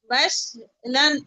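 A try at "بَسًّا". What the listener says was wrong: এটা শিন না সিন দেখে পড়েন তো, শিন না সিন ওটা?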